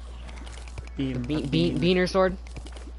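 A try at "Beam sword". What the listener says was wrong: Beam, not bean. You said bean.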